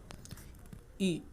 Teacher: तो ई में कम मुंह खोलना पड़ रहा है हमें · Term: संवृत